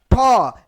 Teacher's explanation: जैसे आपने टॉ बोला, टॉ मतलब जीभ जो है थोड़ा सा देखिएगा मुड़ जाता है, ठौ जीभ आपको मुड़ जा रहा है, ये आपका हो गया मूर्धन्य वाली बात है।